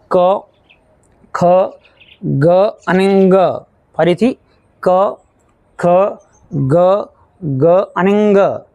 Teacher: તમે એને જ્યારે બોલો છો તો ત્યારે તે જે અવાજ જે છે તે કંઠમાંથી એટલે કે ગળામાંથી આવે છે. ક ખ ગ અહીં તમે નોટીસ કર્યું હશે કે આ જે પાંચ જે મૂળાક્ષરો છે પાંચ જે વ્યંજનો છે તેને તમે જ્યારે બોલો છો ત્યારે અવાજ જે છે હવા જે છે તે ગળામાંથી આવે છે. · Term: કંઠીય વ્યંજનો